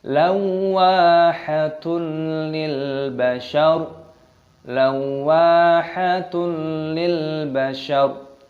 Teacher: dhammah tanwin bertemu dengan lam, idgham bila gunnah, dimasukkan tanpa berdengung